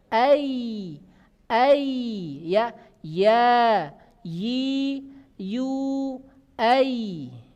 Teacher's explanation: Dia menekan ke atas. Bagian tengah lidah ada tekanan ke langit-langit di atasnya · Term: huruf ya